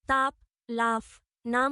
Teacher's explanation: দ্বি ওষ্ঠ, 2 ঠোঁট অর্থাৎ উপরের ও নিচের ঠোঁটের সাহায্যে উচ্চারিত ধ্বনিগুলো হল দ্বি ওষ্ঠ। তাপ, লাফ, নাম শব্দের পো, ফ, ম এ শ্রেণীর ধ্বনি।